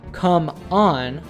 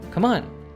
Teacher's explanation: We stress come and de-stress on. Furthermore, we connect the two. So instead of saying come on, we say come on.